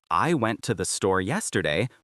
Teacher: The content words went, store, yesterday. The function words I, tothe are unstressed and quick. This creates a du du du du dum rhythm. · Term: rhythm and stress